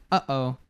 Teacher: this sound between the uh and O that's the glottal t